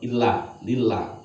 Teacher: Lam jalalah jatuh setelah rakaat kasrah baca tipis